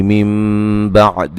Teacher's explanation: میم بعدی نون ساکن کا اقلاب ہے، غنہ کریں گے، نون کو میم سے بدل دیں گے.